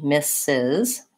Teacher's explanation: Mrs. first syllable stress